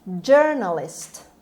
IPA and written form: ˈdʒɜːrnəlɪst (journalist)